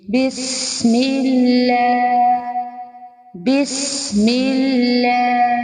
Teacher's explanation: اللہ کا نام، اس سے پہلے زیر آئی ہے تو اس کو ہم باریک پڑھیں گے · سین سیٹی کی آواز آئے گی